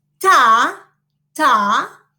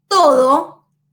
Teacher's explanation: In Spanish, the ta, okay, is dental, not alveolar.